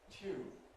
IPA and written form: kwɪk (quick)